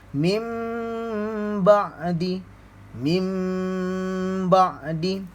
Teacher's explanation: kita tak akan sebut nun, kita akan tukarkan dengan mim. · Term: iklab